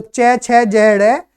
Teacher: जीभ का जो अग्रभाग होता है वो तालु को छूता है, तालु को छूता है, तो उससे जो ध्वनि निकलती है वो तालव्य ध्वनि निकलती है।